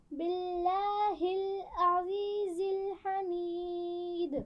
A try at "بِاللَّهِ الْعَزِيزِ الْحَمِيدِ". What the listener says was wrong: پھر پڑھیے، عین کو واضح کیجیے.